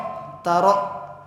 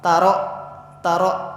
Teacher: seketika ketika membacanya seperti ada yang menghalangi atau mentok. Taro, tidak mantul ataupun tidak panjang. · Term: hamzah